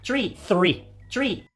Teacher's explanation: when native French speakers try to pronounce this word, they often pronounce it as tree